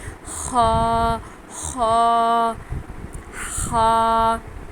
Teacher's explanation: ہم نے موٹا پڑھنا ہے، اور یہ بھی ہمارے گلے کی آواز میں گلے سے آواز نکلے گی